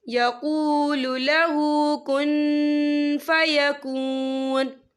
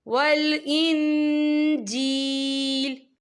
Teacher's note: اذا قضى امرا فإنما نون مشدد ہے تو یہاں پر غنہ ہوگا، فإنما یقول له کن فیکون، یہ دیکھیے کن، یہاں نون ساکن ہے، نون ساکن کے بعد جو ہے فا آ رہا ہے اور فا جو ہے اکفا کا ورڈ ہے تو ہم یہاں اکفا کریں گے، نون ساکن کی آواز کو ناک میں چھپائیں گے